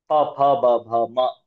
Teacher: ಉ ಅಕ್ಷರ ಪ ಅಕ್ಷರ ಇವೆರಡು ಹುಟ್ಟೋದು ತುಟಿಗಳ ಸಹಾಯದಿಂದ